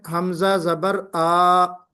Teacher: منہ اوپر کی طرف کھلے گا اور آواز لمبی نہ ہوگی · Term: فتح کی ادائیگی